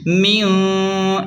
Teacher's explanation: نون ساکن کے بعد جیم آ رہا ہے اس لیے یہاں ناک میں چھپا کر غنہ یعنی اخفا کریں گے